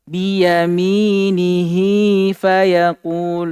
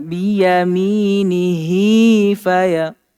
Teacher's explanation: Ini juga antum perhatikan ketika ada ya kecil seperti itu yang ikut di damir, demikian pula wau kecil yang ikut di damir. Ketika dia waqaf, maka ya dan wau tersebut tidak dibaca. Ini kan asalnya dia panjang.